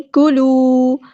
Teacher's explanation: واو بتایا تو مد اصلی کریں گے، 2 حرکات 2 کاؤنٹس لمبا کریں گے